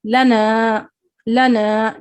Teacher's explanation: आपको लाम को लंबा नहीं पढ़ना है, नून को लंबा पढ़ना है, क्योंकि यहाँ पे अलिफ मद्दा आ रहा है, लना लना।